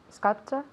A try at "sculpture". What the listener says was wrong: So sculpture. So sculpture. Sculpture. Not sculpture. Remember that E no existe. No hay E ahí. Don't put la E fantasma. So we don't want la E ahí. No hay E. Pues no digáis la E. Okay, so sculpture. Empieza con S, S, S.